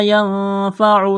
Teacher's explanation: نون ساکن کے بعد فا ہے، حروف اخفا ہے، غنہ کریں گے، آواز ناک میں چھپائیں گے۔